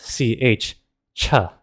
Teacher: The sound ch is actually a combination of two sounds t and sha.